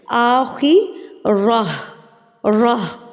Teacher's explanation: اب ہم نے خا کو بھی پر پڑھ لیا یعنی کہ موٹا پڑھ لیا, را کو بھی پر پڑھ لیا, اور تا کو ہم نے بدل کے ہائے ساکنہ میں تبدیل کر دیا.